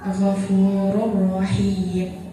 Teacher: maka cara bacanya memasukkan huruf pertama ke dalam huruf kedua tidak disertai dengan dengung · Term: idgham bilaguna